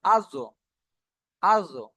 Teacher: জীভের কিনারা এবং তার বরাবর উপরের মাড়ি দাঁতের গড়ার সাথে লাগিয়ে উচ্চারণ জীবের কিনারা মানে এক সাইড সাইড মাথাটা কিন্তু আগা হয় আর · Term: মাখরাজ